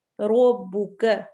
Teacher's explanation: رو heavy ہوگا، رو کے اوپر فتحہ زبر آ رہی ہے